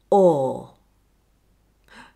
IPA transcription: ɔː